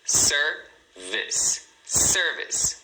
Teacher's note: você tem duas sílabas, service. Service, né? Sendo a primeira, a mais forte. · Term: sílaba forte